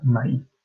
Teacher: nuestra palabra para maíz es así, con el énfasis, el acento en la i · el tono se le da a la i, al momento de hablar, entonces debe de llevar acento ortográfico, ¿de acuerdo?